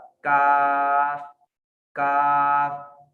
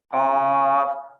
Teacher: और काफ की अदायगी जबान का दरमियानी हिस्सा जब सख्त तालु और नरम तालु जहां आप इसमें मिलते हैं, जो इनका संगम है, वहां पर जाकर जबान का दरमियानी हिस्सा टकराएगा तो इससे बारीक काफ अदा होगा, काफ काफ। और मोटा काफ इससे जरा पीछे, काफ।